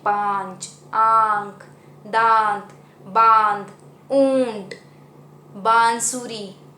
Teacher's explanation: बोलने के समय उसकी आवाज़ नाक और मुंह दोनों से निकलती है, जैसे कि पांच, आंख, दांत, बांध, ऊंट, बांसुरी। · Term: चंद्र बिंदु